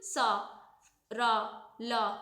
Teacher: वत्सर्य क्या होता है, इसमें हमारे दांत और मसूड़ा टच होता है, जैसे कि सा, रा, ला।